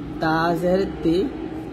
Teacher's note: যখন আপনি তাট উচ্চারণ করবেন জিহ্বাটা উপর দুই দাঁতের সাথে আপনি হালকা লাগিয়ে তাট উচ্চারণ করবেন